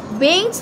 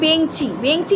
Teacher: শেষে যে আমরা যুক্তাক্ষরটা আছে সেখানে কিন্তু আমরা একটা স্বরের আগমন ঘটাচ্ছি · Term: অন্তঃস্বরাগম